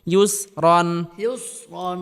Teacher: এখানে ইয়া উচ্চারণের সময় ঠোঁটকে গোল করতে হবে, কারণ ইয়ার উপর পেশ রয়েছে, আর পেশে সর্বাবস্থায় ঠোঁট গোল হয়ে থাকে।